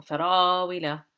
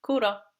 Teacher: So this is long. The ra alif is long. Farawila. But here, the ra just has a fatha, so it's short.